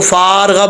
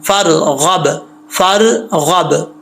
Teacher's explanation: फ़ा के आगे अलिफ जो है जब फ़ा को रा से मिलाएंगे तो अलिफ गिर जाएगा, इसको फ़ारग़ब नहीं पढ़ना, फ़रग़ब, फ़रग़ब, बा में कलकला है लास्ट पे, ठीक है।